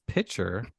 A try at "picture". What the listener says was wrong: you pronounce picture weird picture picture like a like a like a picture like you're pouring it